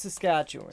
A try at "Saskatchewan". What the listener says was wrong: You all try so hard, but you put more emphasis in it than it needs. It just flows. Saskatchewan. Saskatchewan. That's all you need. Saskatchewan. Chew. Saskatchewan.